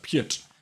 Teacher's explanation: it's like a T with a rolled R, so it's really unnatural for the rolled R after the T.